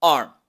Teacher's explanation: Y luego la palabra arm, con una A larga, donde los labios superiores se relajan y la mandíbula baja. La R del inglés y la M del español.